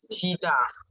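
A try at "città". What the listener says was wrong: Chitta. It's a double T. T is a double sound. Suppose like double L, chilla. Double N is a chinna. Suppose like if you are actually in if you are in South India in Chennai, Anna. Double N is Anna.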